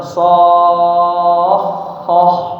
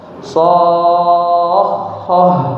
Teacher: Dipanjangkan so-nya 6 harakat so, kemudian ditambah sedikit tekanan volume suaranya